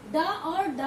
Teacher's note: जीभ जो है एक स्पर्श करके जल्दी वापस आती है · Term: उच्छिष्ट